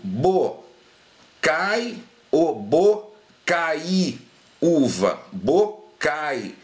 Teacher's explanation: a pronúncia mais forte é na primeira vogal do ditongo e a pronúncia mais fraca é na segunda, né, que é uma semivogal. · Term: ditongo decrescente